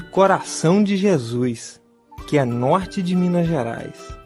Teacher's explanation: é possível notar o som de R chamado de glotal